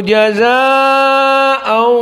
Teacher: permasalahan jaza, maka mad wajib muttasil dalam keadaan 4 harokat.